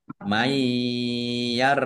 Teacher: Mayyartad dan nun sukun bertemu dengan huruf ya, itu birunah, masuk dengan mendengung, ya. Nunnya tidak dibaca, langsung masuk ke huruf ya, Mai ditahan biar tampak mendengungnya.